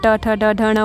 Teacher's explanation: ट जब देखोगे आप कि आपके दांत से जस्ट ऊपर से थोड़ा, दांत के जस्ट ऊपर जो आपका स्किन है उसको जब आप ये ट ठ ड ढ ण बोलेंगे तो आपका जीभ उसको टच करता है, तो इसको हम बोलेंगे कि मूधा से हो रहा है टच।